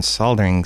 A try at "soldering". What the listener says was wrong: Did you pronounce the L in soldering?